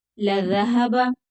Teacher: दाल बारीक पड़ा जाएगा बगैर सिटी के।